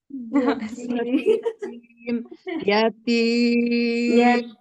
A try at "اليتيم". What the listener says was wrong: Suaranya itu kayak mau hilang, sudah mau habis gitu. Jadi jangan diangkat tinggi.